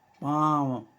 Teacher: तो पाँ बोलें तो पा बोलने में नासिका का भी योग होता है और कंठ का भी योग होता है